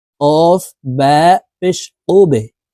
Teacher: এই বা হরফ কলকলার হরফ ধাক্কা দিয়ে উচ্চারণ করতে হবে নিচের দিকে ধাবিত করে ধাক্কা দিয়ে উচ্চারণ করতে হবে